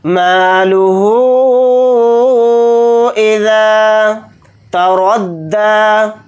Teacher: مد اس میں اس طرح سے کریں گے، مالہ اذا تردى، تا کو جلدی پڑھیں گے، را کو دال کے ساتھ ملا کر پڑھیں گے، را کو یہاں پر موٹا یعنی پر پڑھیں گے، دال کے اوپر کھڑا زبر ہے، دال کو تھوڑا کھینچ کر پڑھیں گے، ایک الف کی مقدار، یا نہیں پڑھا جائے گا۔